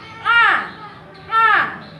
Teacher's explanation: membuka mulut dan menghembuskan udara dari tenggorokan bagian tengah ah menghembuskan ya ah ah menghembuskan udara dari tenggorokan bagian tengah